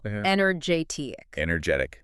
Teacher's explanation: You have to hit the stress on the correct syllable. So for energetic, where does the stress go? It hits that third syllable.